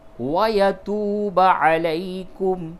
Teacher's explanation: وَيَتُوبَ واو سے قبل پیش ہو تو وہ واو مدہ ہوتا ہے، تو اس واو کو تھوڑا سا کھینچ کر کے پڑھیے گا